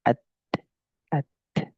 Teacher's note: dia punya sifat syiddah dia punya sifat hamus